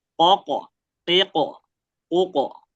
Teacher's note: Qolqof tadi dia disentak atau memantul.